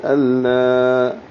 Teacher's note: اللہ لام کو 2 حرکات لمبا کریں گے، لام سے حمزہ کو ملاتے ہوئے